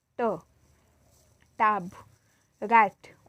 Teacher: Oral passage is blocked by pressing the tongue tip against the alveolar ridge. This is alveolar.